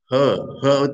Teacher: ऊष्म कहते हैं, सीटी बजाने जैसा। ह ह तो अ का ही रूप है, महाप्राण हो गया